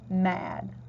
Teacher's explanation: we're going to put our lips together and make the sound that the m makes and it makes the sound almost like when something tastes good